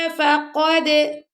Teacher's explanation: دال پر ہم نے قلقلہ کیا.